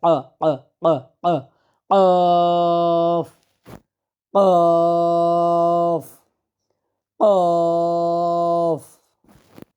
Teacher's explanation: জিহ্বার গোড়াটা উপরের তালুর সাথে খুব চাপ দিয়ে লাগিয়ে একটা ড্রপের মত হবে